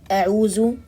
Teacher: pronouncing the dal as a za or dha